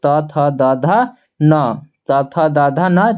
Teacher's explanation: त थ द ध न जितने भी है सबका उच्चारण स्थान हमारा दंत होगा